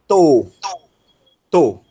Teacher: o ômicron é o O fechado, com circunflexo